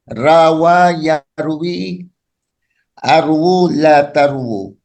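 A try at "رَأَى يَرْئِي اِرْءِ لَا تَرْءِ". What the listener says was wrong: Oh, kenapa arwu? Irwi, Pak, untuk amarnya. Rawa yarwi irwi la tarwi.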